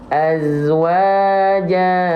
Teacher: Nah, tapi Kalau selain ta marbutoh dan kita berhenti pada huruf tersebut yang berharokat fathatain, maka tidak lagi dibaca menjadi jan, tapi kita baca menjadi ja. Dua harokat, ya. Jadi dua harokat, seolah si fathahnya hilang satu. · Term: mad iwad